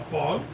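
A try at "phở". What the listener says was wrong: It's PHO. Is it pho? Fog? Where's the G come from?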